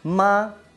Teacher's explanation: Simple ejemplo, voy a hacerlo con un sonido que es ma. Ma, primer tono. Arriba y se mantiene. Segundo tono, ascendente, ma.